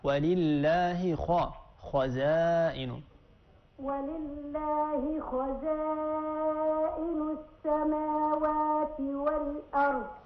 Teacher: الخاء مفخمة وفي أعلى مراتبها لأنها مفتوحة